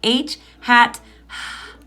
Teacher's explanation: h is actually a stretchy consonant sound even though you might run out of air if you hold on to the sound for too long you can stretch it out